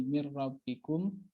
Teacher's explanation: Sukun bertemu ro idgham bila guna nunnya nggak dibaca langsung ke huruf ro-nya